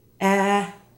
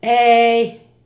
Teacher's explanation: the short e in English is very light a but in Spanish the mouth is open wider